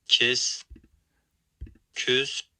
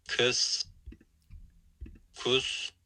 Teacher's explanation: there is a 4-way distinction amongst the high vowels, which is pretty cool.